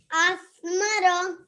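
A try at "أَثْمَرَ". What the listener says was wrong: Very nice. That was very nice pronunciation.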